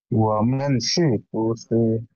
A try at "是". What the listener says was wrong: সি না, এটা সি না, এটা হচ্ছে ছি। হ্যাঁ, ফু ছি, এরকম, ও আমার সি, ফু ছি। তোমার কিন্তু এটা এখনো, তোমার এই উচ্চারণটা ঠিক হয়নি।